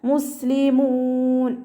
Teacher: സീൻ കൽക്കല ലെറ്ററില്ലാത്തത് കൊണ്ട് നമ്മൾ half സുക്കൂനിൻ്റെ sound കൊടുക്കുക കേട്ടോ. മുസ്ലിമൂൻ എന്നായി പോവാതെ ശ്രദ്ധിക്കുക.